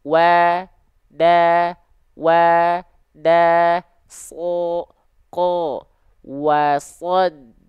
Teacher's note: Ya, jadi pastikan wanya tipis ya. Wa-nya tipis, dalnya tipis.